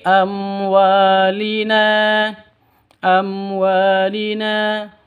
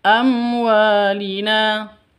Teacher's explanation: mim mati bertemu dengan wawu. Jelas izhar, jelas terang, ya. Jelas terang, tidak boleh dengung. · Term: izhar safawi